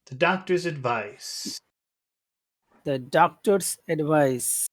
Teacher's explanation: accent is on the final syllable it's never on the first syllable ever